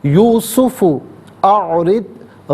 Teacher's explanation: را کے نیچے زیر را کو باریک کر کے پڑھا جائے گا